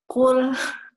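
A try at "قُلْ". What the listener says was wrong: Harus ada sifat tebalnya. Kalau ko tersebut kun. Kun. Lidah belakang diangkat ke langit-langit belakang. Kemudian tidak hanya itu, lidah tengah pun mengangkat. Lidah tengah pun mengangkat. Kun. Imbas dari huruf isti'ala. Huruf yang mengangkat lidah.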